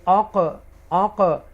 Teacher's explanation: قاف ساکنہ ہے تو اس کو ایکو ساؤنڈ کے ساتھ ادا کریں گے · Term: حروف قلقلہ